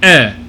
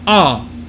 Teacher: the letter e in latin is going to be pronounced it's a tall mouth version of ah